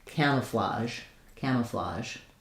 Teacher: So I would write this as camouflage. So I write the J sound with a ZH because it's the same mouth position I have for the SH sh sound. It's just that my voice is on J.